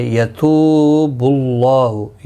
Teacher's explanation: یتو واو مدہ ہے، ایک الف کی مقدار کے برابر کھینچ کر پڑھیں گے